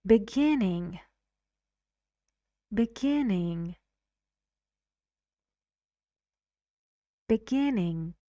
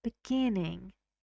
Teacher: And the stress is on gin.